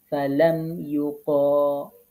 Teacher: অর্থাৎ লা পড়তে হবে লাম বারিক বা পাতলা পড়তে হবে